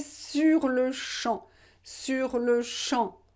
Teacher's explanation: Don't pronounce the final P.